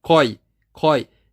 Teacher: Sequoia não pronuncia o U. Ó, coi, coi. Não tem o som do U.